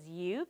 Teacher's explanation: Because it's an open syllable, there's not a consonant behind it, so the U is gonna make a long U sound